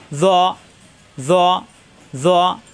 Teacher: শব্দের শুরুতে থাকবে এরকম জ, মাঝখানে থাকবে এরকম জ, শেষে থাকবে এরকম জ। জ, জিব্বার আগা উপরে দাঁতে আগায় লাগিয়ে কিন্তু মোটা হবে।